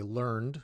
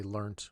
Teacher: in American English, we would say learned with an ED ending, but in British English, they would say learnt with a T.